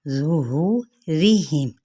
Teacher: रा की ज़ेर यानी बारीक पढ़ी जाएगी